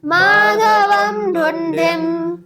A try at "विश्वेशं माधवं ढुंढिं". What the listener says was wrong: ये ध नहीं है ढ है ढ है ढ ढोलक वाला। हाँ विश्वेशं माधवं ढुंडिं